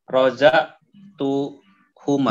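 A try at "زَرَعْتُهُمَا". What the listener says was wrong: Za bukan roza tapi zara. Pakai huma, mimnya panjang.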